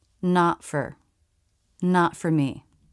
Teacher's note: phrase not for me here the t is followed by F I stop the air not and then without releasing go into the F sound